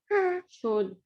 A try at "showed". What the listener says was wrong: Showed. Nice.